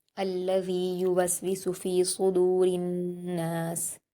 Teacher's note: रा को ज़ेर है, नून से मिलाएंगे तशदीद होने की वजह से